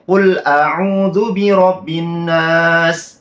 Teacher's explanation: Jadi nunnya kurang dengung, sedangkan nun tasydid itu harus didengungkan selama 3 harokat atau 1,5 alif.